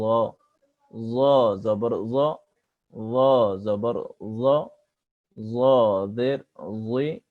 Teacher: জ অক্ষর কণ্ঠস্বরকে মোটা করে পড়তে হয়, জ অক্ষর কণ্ঠস্বরকে মোটা করে পড়তে হয়। জিহ্বার আগা সামনের উপরের দাঁতের সাথে লাগিয়ে কণ্ঠস্বর মোটা করে উচ্চারিত হবে